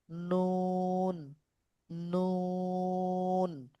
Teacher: জিহ্বার আগা বরাবর উপরে তালুর সঙ্গে লাগাতে হবে নুন নুন তো 10 নাম্বার আছে জিহ্বার আগার কিনারা সামনের উপরের দাতের এর মারির সঙ্গে লাগাইয়া উচ্চারিত হয়।